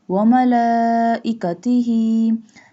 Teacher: Stretch this lam because here is a standing fatha and long mad is on the lam.